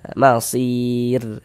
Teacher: Kalau ada huruf ro sukun, sebelum huruf ro sukun ada huruf ya sukun, maka huruf ro sukunnya kita baca tipis. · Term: tarkik